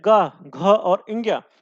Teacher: क वर्ग का उच्चारण स्थान क्या होता है आपका कंठ होता है